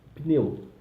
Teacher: Em português, o que seria o nosso caso do Shevá, tem som de um I muito breve.